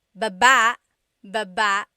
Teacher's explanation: Emphasis is on the second syllable